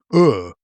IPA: ɜː